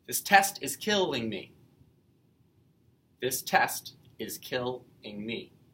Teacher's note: Every second syllable is stressed. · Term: Iambic rhythm